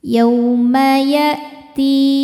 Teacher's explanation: Ti mad tabi'i zahiri karena ada ya sukun sebelumnya kasrah. Cara bacanya dipanjangkan 2 harokat. · Yaw ada huruf lin atau harfulin karena ada waw sukun sebelumnya berbaris fathah. Cara bacanya cukup dilembutkan atau dilunakan.